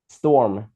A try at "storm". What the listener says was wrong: Sao nghe em phát âm nó giống như là Tom mà không nghe thấy âm sờ mấy.